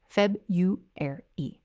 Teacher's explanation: They change that R-u to a Y-u sound